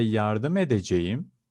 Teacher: i use the word brdemetmek so when you say yarda medejim the t changes to d